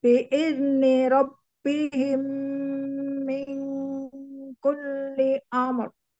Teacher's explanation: Ro-nya dia tebal ya, walaupun dia sukun, itu dia tebal, dihukumnya tebal.